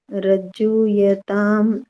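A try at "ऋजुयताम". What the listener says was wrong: रज्जु यानी री है ना, ऋषि वाला, तो रिजुयताम।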